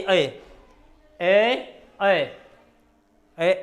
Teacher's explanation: अगला है हमारे पास ए ए, देखो गले में भी आवाज आ रही है, ए, और हल्की सी ए। तालु के पास जीभ जा रही, तालु को पूरा टच नहीं कर रही, पर तालु के पास जीभ जा रही है। वैसे तो गले से बोला जा रहा है, पर तालु के पास भी ए, तो इसलिए इसे दोनों का नाम देते हैं, कंठ और तालु, कंठ और तालु, ए।